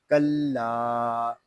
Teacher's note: لام الف زبر لا، کلا، لام کو ہم ایک الف تک کھینچ کر پڑھیں گے کیونکہ یہاں پہ الف مدہ ہو رہا ہے